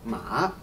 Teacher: Can you hear how the voice goes lower and then higher?